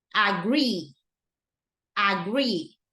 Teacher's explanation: the stress goes into the second syllable